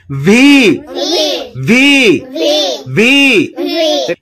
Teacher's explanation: ভি উচ্চারণ করার সময়ও সামনের উপরের দাঁতের আগা নিচের ঠোঁটের পেটের সঙ্গে লাগিয়ে উচ্চারণ করতে হয়।